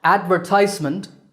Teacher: or advertisement stress on the third syllable